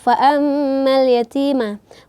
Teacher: Kemudian selanjutnya fa'ammal yatima. Ini merupakan mim bertasydid sehingga kita harus betul-betul kita dengungkan bacaannya karena ini merupakan gunnah tingkatan paling atas.